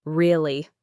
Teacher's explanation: If I say it with a falling intonation, really, it's a statement. I'm showing that I understand or agree.